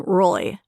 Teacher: there was like a glottal L to begin with